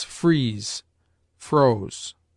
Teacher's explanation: the sound, as its name izzard or s hard expresses, of an s uttered with a closer compression of the palate by the tongue